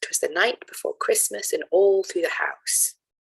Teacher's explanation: here there are four feet each of which has three syllables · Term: triple meter